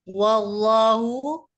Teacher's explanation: lafaz jalalah lam alif dibaca tebal karena sebelumnya fathah